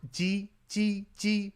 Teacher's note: say it like you're saying the regular J sound in English, like in Jeep, except with the tongue position against the back of your bottom teeth.